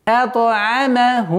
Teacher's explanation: Вот здесь применяем. Назализация, полная назализация в размере двух огласовок.